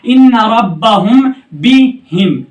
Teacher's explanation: मीम साकिन के बाद बा है तो गुन्ना के साथ इख्फा होता है